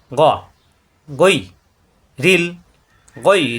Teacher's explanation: গা হবে না, কণ্ঠনালীর শেষ অংশ থেকে